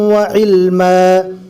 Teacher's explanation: دو زبر رکنے کی حالت میں الف مدہ بنے گا